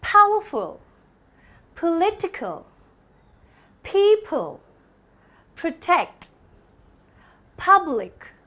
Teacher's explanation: the per sound is the voiceless or unvoiced sound